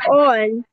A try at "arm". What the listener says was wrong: No, estamos metiendo una O que no va. Tiene que decir arm, arm.